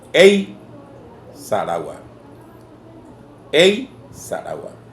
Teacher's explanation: Ei es un diptongo, entonces es pesada y ella misma es tónica.